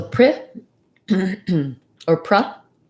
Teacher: Just don't use a pre. It's not pre, but rather a reduced vowel. So pra si. Stress on the si.